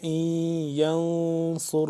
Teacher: صاد کو موٹا کر کے سین سے جدا کر کے پڑھیں گے